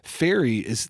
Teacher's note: If we try the ones on the other side, say fairy, if you try the test by putting your fingers on your vocal cords, do the F sound. You'll notice there's no vibration. Fairy that's created, the F sound is from the articulators or the organs inside your mouth.